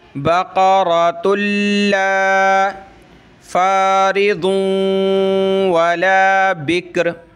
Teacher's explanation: یہ تا لام آپس میں ملیں گے